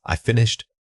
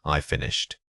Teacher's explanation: When expressing excitement or strong realization, don't be afraid to use a pitch change. A sudden dramatic fall in tone can add emphasis and emotional weight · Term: falling pitch